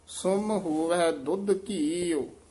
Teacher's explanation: ਔਂਕੜ ਨਾਲ ਉਚਾਰਨ ਕਰਨਾ ਹੈ, ਸਮ ਨਹੀਂ ਕਹਿ ਦੇਣਾ